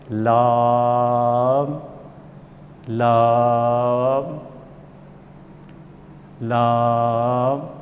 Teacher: اوپر والے دانتوں کے مسوڑوں سے جب لگے گا تو یہ لفظ ادا ہوگا